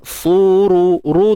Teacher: Suru, ru tebal, ra baris depan tebal